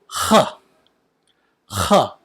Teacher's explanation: This letter really sounds like H, H, somewhere between a K and an H, and this sound is foreign to English